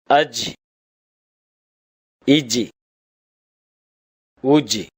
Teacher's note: நாவின் நடுப்பகுதி மேல் முரசை தொடும்போது ஒலிக்கப் பெறுகின்றது.